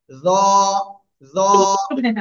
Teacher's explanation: জিব্বার আগা উপরে দুই দাঁতের আগায় লাগিয়ে মোটা আওয়াজে আমরা উচ্চারণ করব।